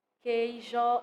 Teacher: a gente não escuta o som do U, por mais que ele esteja escrito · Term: dígrafos